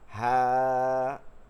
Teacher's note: খেয়াল করছেন কি না আমি হা পড়ার সময় কিন্তু টান দিয়া বলতেছি